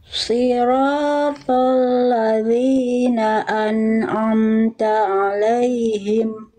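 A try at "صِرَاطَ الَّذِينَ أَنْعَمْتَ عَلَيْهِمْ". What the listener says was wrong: sekali lagi bunda sadnya dipertebal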